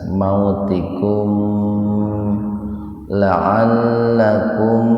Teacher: Tikum idhar syafawi, mim mati ketemu dengan lam, jadi dibaca jelas di bibir ya. Mimnya dibaca jelas.